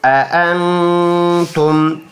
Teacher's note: حمزہ زبر حمزہ نون زبر ناک میں آواز ایک الف کی مقدار 1 سیکنڈ کے لیے لے کے جائیں گے